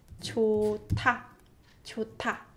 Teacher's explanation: hiet batchim followed by tigut consonant becomes t sound. So this is pronounced 좋다, 좋다.